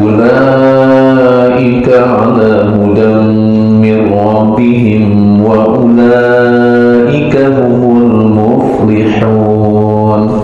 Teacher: Ulaika 4 sampai 5 harokat ya, mad wajib muttasil dibacanya 4 sampai 5 harokat.